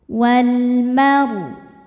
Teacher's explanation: alif lam menghadapi huruf qamariyah, yaitu mim. Cara bacanya lam dibaca jelas atau disebut izhar qamari.